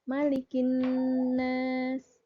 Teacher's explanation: Dimanya itu tidak panjang ya, jadi hanya malikin nas